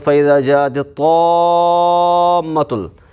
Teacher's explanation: جاء میں مد متصل ہے کیونکہ حمزہ اسی کلمے میں ہے الف مدہ کے بعد